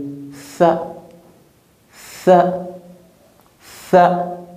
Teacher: Pour bien prononcer cette lettre, on place la langue entre les dents. Le bout de la langue sort un peu. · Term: la lettre Tha